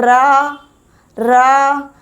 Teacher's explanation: आप इसका उच्चारण कीजिए रा का, तो हमारी जो जीभ है वो कंपन करती है बोलने में। बोलकर देखिए, रा, तो जीभ कंपन करती है, इसलिए हम इसे प्रकंपित या लुंठित व्यंजन बोलते हैं।